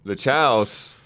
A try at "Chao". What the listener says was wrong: You've pluralized the word chow,